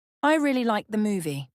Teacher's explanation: emphasis on movie clarifies what you're talking about